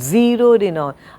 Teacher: So, I stressed on the initial sound, zeroed in on.